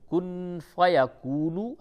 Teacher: اس جگہ پہ بھی اخفا ہوگا، نون ساکن کے بعد فا آیا